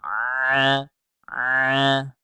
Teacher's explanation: Huruf A itu tenggorokan tengah. Caranya adalah disempitkan tenggorokan tengahnya, dipaksa keluar suaranya.